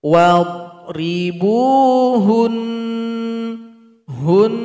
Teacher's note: dhad jangan dipantulkan karena tidak termasuk huruf qalqalah